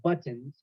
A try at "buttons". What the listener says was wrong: You really pronounce those T's, buttons.